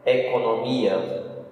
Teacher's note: Então, com circunflexo. E a sílaba forte é mi.